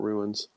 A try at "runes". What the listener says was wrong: Yeah, no, not ruins. It's runes, like the rune stones. Okay, it sounded like ruins both times.